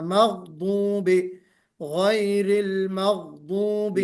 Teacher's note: और जनाब मगदूबी गैन पर भी कलकला नहीं होना, मगदूबी, गैरिल मगदूबी, हैं।